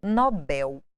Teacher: o acento, a tonicidade, o acento tônico, não gráfico da palavra é no final.